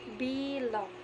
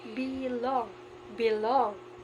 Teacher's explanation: So the word be is the unstressed, while the long is the stress.